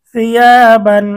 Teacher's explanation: সিয়া, বা দুই জবর বান, সিয়া বান। তানভিনের পরে খ আসছে, ইজহারের হরফ, গুন্না ছাড়া স্পষ্ট পড়তে হবে।